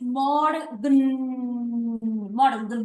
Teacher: no hay una e sino que va directo a la n